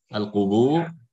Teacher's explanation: al-qubur tebal karena kan sebelumnya dhamma.